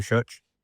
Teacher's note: When he said church, it sounded like church with an SH.